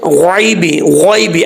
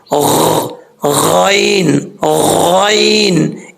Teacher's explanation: غین جب ادا ہوتی ہے تو غین کی آواز آتی ہے اس طریقے سے غین غین, اس طریقے سے نکالنا ہے. بیچ میں عین کی آواز گلے سے نہیں نکالنا